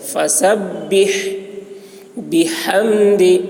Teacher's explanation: فسبح میں ہا کو حلق سے ادا کریں گے. فسبح بحمد، بحمد میں ہا اس کو بھی حلق سے ادا کریں گے